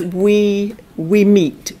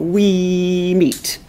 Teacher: So he's humming through that M, not we meet, okay? And that kind of propels him forwards, because once we get to the M of the word meet, we want to hear the rest of the word eat, so we understand we meet.